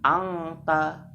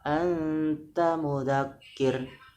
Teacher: Cara membacanya ancang-ancang pada huruf selanjutnya. Kalau tak, ancang-ancangnya juga huruf ta, bukan huruf ka. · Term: ikhfa hakiki